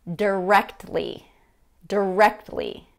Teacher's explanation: dropped or reduced t in the middle of the word so instead of producing that really sharp t sound in the middle of the word basically we've dropped it · That T in there has been dropped.